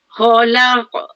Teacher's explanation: Laqad kha tebal. Khalaq qaf mati tanda sukun. Dia tebal dan juga qalqalah.